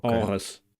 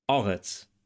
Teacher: we encounter the voiced uvular trill again in biblical Hebrew, and the fricative in modern Hebrew.